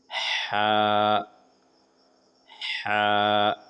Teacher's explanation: हा मुंह से बिना आवाज हल्की सांस की तरह हलक से आवाज निकालते हुए हा अदा होते हैं। हा हुरूफ हलकी है। बीच हलक से अदा होते हैं। · ہا حروف حلقی ہے، بیچ حلق سے ادا ہوتے ہیں. حروف حلقی مطلب جو حرف حلق کے اندر سے ادا ہوتے ہیں. · منہ سے بنا آواز ہلکی سانس کی طرح حلق سے آواز نکالتے ہوئے ہا ادا ہوتے ہیں. ہا حروف حلقی ہے، بیچ حلق سے ادا ہوتے ہیں. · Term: بڑی ہا